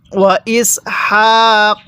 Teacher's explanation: এই হাটা উচ্চারণের সময় মুখ দিয়ে হালকা বাতাস বের করতে হবে